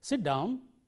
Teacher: if you use the right tone rising tone say sit down it sounds very polite